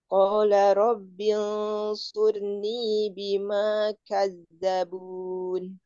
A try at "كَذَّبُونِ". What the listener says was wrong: Zalnya ditipisin lagi, Um. Zalnya ditipisin lagi, Um. Kaz kurang tipis kazabun dan dialirkan zal kazabun.